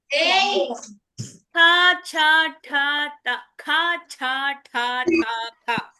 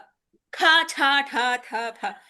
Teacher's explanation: గట్టిగా పలుకుతాం మనం. ఆ గట్టిగా ఉచ్చారణ పెరిగేటప్పుడు ఏమవుతుందండి, కొంచెం పెద్దగా గాలి ఎక్కువ తీసుకోవాల్సి వస్తుంది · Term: మహాప్రాణాక్షరాలు